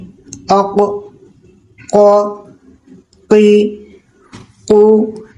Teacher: اسے عربی میں لحات یعنی کوا کے پاس کا حصہ کہتے ہیں۔ جب آپ اپنی زبان کے آخری حصے کو تالو کے نرم گوشت سے مضبوطی سے لگاتے ہیں تو ایک بھاری اور کڑکدار آواز نکلتی ہے · زبان کی جڑ، یعنی جو زبان کا آخری حصہ ہوتا ہے، جب اوپر کے تالو کے نرم حصے سے ٹکراتے ہیں تو قوف ادا ہوتا ہے۔ اسے عربی میں لحات یعنی کوا کے پاس کا حصہ کہتے ہیں۔ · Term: حرف قوف کا مخرج